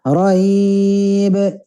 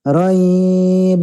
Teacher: lin dulu baru ba qalqalah